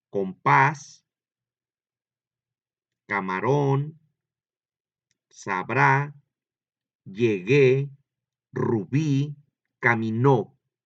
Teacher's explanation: Si es la última, en la última sílaba es donde lleva el acento o la que suena más fuerte, se llaman agudas.